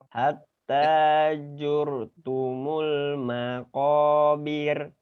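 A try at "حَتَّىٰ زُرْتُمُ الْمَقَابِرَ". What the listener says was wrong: Bir. Jadi R-nya apa ya? getarannya itu jangan banyak-banyak, bir. Nah, jangan terlalu banyak.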